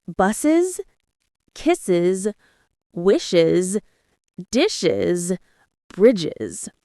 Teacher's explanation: That means a hissing or a buzzing sound, like s, z, sh, ch, ch. It's hard to pronounce 2 hissing sounds together, so we add a short vowel, I, to make it easier. That's why it becomes an extra syllable. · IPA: /ɪz/